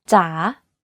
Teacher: in rising tone the pitch goes down first and then goes up · You can hear that my pitch went down slightly and then up when pronouncing this word.